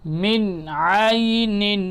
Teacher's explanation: نون ساکن ہے، نون ساکن کے بعد حروف حلقی میں سے عین آ رہا ہے، تو اب کیا کریں گے؟ نون کی آواز کو ہم ظاہر کر کے پڑھیں گے، من عین، اس طریقے سے ظاہر کریں گے۔